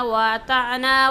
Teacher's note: وَأَطَعْنَا کے طوا کو بھی موٹی آواز سے پڑھیں گے